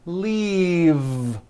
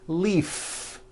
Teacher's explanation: an unvoiced F the word is leave with a voiced V keep the voicing going throughout the whole word and voice the V